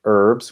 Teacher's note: we would say herbs with that er sound in american english